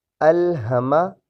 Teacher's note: یہ ہا سینے سے ادا ہوگی